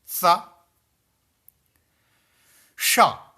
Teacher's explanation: शा, तालव्य शा, तालु की मदद से उच्चारण होता है, इसलिए उसे तालव्य शा बोलते हैं। · दंती सा क्यों बोलते हैं? क्योंकि हमारी जीवा दांत को टच करती है, स्पर्श करती है। तो ऐसे में दंती सा हो जाता है।